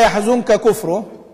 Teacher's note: لأن النون التي قبل الكاف تخفى، فيصبح في ثقل إن عندي إخفاء، والإخفاء قريب من الإدغام، يعني ليس إدغاما وإنما هو قريب من الإدغام، فيأتي بعدها إدغام يكون ثقيلا.